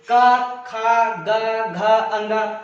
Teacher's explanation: जो का वर्ग का हमारा उच्चारण होता है वो होता है कंठ से।